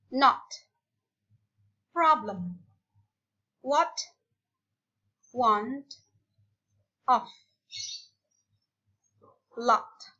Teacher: O ini agak ke belakang mirip-mirip o tetapi bukan o o di belakang ya not problem what want of lot ini